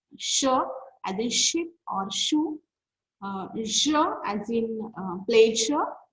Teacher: our tip of the tongue touches the or goes closer to the alveolar ridge. At the same time, our front of the tongue is raised towards the hard palate, and those are known as palato-alveolar sounds.